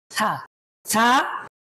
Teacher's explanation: জিহ্বার আগা দাঁতের আগা লাগিয়ে তারপর উচ্চারণ করতে হবে